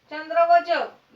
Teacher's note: चंद्र आणि जग हे तालव्य प्रकारात मोडतात